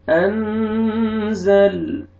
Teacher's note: نون ساکن کے بعد حروف اخفاء میں سے زا ہے، آپ نے نوز میں ساؤنڈ لے کے جانا ہے، اخفاء کریں گے۔